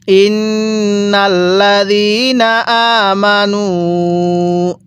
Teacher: হামজায়ের মধ্যেও টান দিব, নুনের মধ্যেও টান দিব।